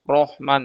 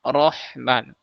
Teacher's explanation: Karena pangkal lidahnya naik ke atas, otomatis suara yang keluar dari ee tenggorokan kita itu terhalangi sedikit terhalangi oleh pangkal lidah. Nah, maka suara itu akan naik ke ke atas. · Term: tebal